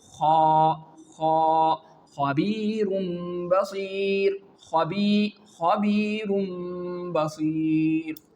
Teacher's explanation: it is pronounced from the upper part of our throat which is towards our mouth · I'm sure that you understand the quality of those letters which are known as heavy letters and the nomination and the main rule to nominate these letters is to feel if there is a strongness and there is a thickness in the pronunciation and the rising of your tongue in your mouth, it means you are reciting the heavy letters. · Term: throat letters